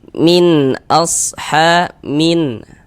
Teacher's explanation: Bunyi nun sukun atau bunyi tanwinnya itu kita baca jelas. Jadi jangan disamar-samarkan, kita baca jelas. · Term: izhar halqi